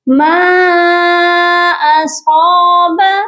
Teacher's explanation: صاد کو موٹا کر کے پڑھیں گے اور اس کے ساتھ الف بھی ہے، اسی لیے اس کو 1 الف کی مقدار لمبا کر کے پڑھا جائے گا